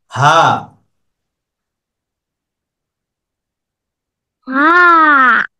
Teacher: এরপর হলো হা, কণ্ঠনালীর শেষ থেকে, শুরু থেকে।